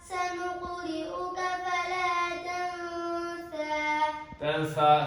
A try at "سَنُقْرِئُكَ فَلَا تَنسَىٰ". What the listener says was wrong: ثا تو نہیں یسین ہے.